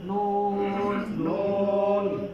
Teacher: জিহ্বার আগা তার বরাবর উপরে তালুর সঙ্গে লাগিয়ে তার বরাবর উপরে তালুর সঙ্গে লাগিয়ে নুন নুন 10 নাম্বার মাখরাজ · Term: 9 নম্বর মাখরাজ